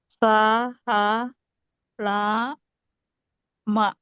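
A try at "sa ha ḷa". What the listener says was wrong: not ma. Sorry, you can use whatever one of vowel, either ang or ing or We can say ang.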